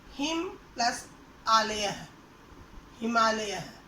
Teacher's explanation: अब देखिए बच्चों, हिम के अंत में अ है और आलेह के शुरू में आ है। अ और आ दोनों मिलकर आ बन गया, तो दोनों को मिलाकर हिमालय शब्द बना। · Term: संधि